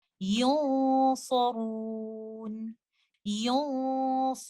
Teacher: because Sod is a heavy letter, the gunna will be heavy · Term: ikhfa